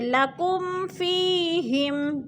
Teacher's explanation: جیسے لکم فیہم، فی پہ یا مدہ ہے، یا ساکن سے پہلے فا کے نیچے زیر ہے تو یا مدہ۔ یا مدہ کو 1 الف 2 حرکات کے برابر لمبا کر کے پڑھنا ہے